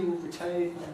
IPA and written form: rɪˡtʰeɪn (retain)